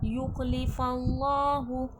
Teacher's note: اللہ لفظ سے پہلے زبر ہے، اللہ لفظ موٹا کر کے تفخیم کر کے پڑھا جائے گا۔